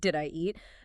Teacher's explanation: did ye eat loses the U sound and sounds bizarrely close to a schwa or an I sound